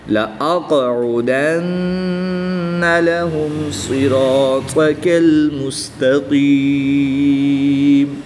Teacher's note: صاد بھی پر پڑھیں گے، را بھی پر پڑھیں گے، الف بھی پر پڑھیں گے، اور طا بھی پر یعنی موٹا پڑھیں گے